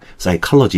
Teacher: 이 P 사운드를 발음을 안 해버리는 거예요. 그래서 묵음이 돼가지고 psychology, 심리학이라는 단어입니다.